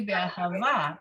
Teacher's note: It could be be'ahava, put the accent on the last syllable